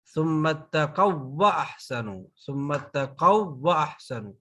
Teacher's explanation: ثم اتقوا واحسنوا، نو، ثم اتقوا واحسنوا نہیں پڑھیں گے، بلکہ ثم اتقوا واحسنوا، ثم اتقوا واحسنوا، واو یہ والی جو ہے یہ آگے والی واو میں مرج ہو جائے گی، ٹھیک ہے۔ پہلی واو دوسری واو میں مرج ہو جائے گی، داخل ہو جائے گی، تو اس میں شد آ گئی، تو شد والا حرف ڈبل ہوتا ہے، تو اس لیے پہلی واو دوسری واو میں داخل ہو کر ہم اس کو پڑھیں گے، ثم اتقوا واحسنوا، نہ کہ ثم اتقوا واحسنوا، تو یہ رونگ ہو جائے گا، ٹھیک ہے۔